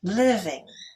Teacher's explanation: Living is stressed on the first syllable.